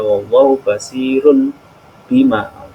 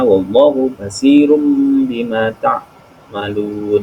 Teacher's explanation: mengubah suara n menjadi m, disebut iklab. Apabila nun sukun atau tanwin dibaca iklab ini bertemu dengan huruf ba.